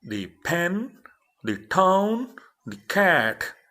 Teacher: So P, T, K sound are aspirated sounds.